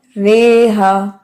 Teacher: रॉ को मज रॉहा नहीं पढ़ेंगे, बल्कि मज रेहा पढ़ेंगे, रेहा, रॉहा नहीं रेहा पढ़ेंगे।